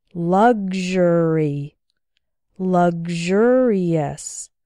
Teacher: in luxury and luxurious it sounds like gzh